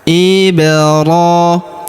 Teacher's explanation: Unzila ila Ibrahima. Huruf ba berharakat sukun kita pantulkan atau kita qalqalahkan.